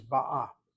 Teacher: The feminine present tense is ba'a. The accent is on the second syllable.